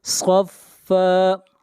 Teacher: صاد کو موٹا پڑھیں گے، صاد حروف مستعلیہ میں سے ہے